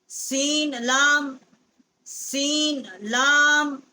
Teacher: سین کا جو مخرج ہے یہ بھی ثنایا سفلا کا کنارہ جب زبان کا سوا جو ہے اسے ٹکر کھاتا ہے تو اس سے سین جو ہے وہ ادا ہوتی ہے.